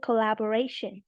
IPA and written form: kəˌlæb.əˈreɪ.ʃən (Collaboration)